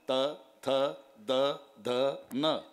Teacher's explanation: जेव्हा संबंध दाताचा जिभेशी येतो ते दंत्या आहे